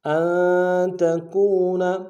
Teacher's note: واو مدہ ایک الف میں کھینچیں گے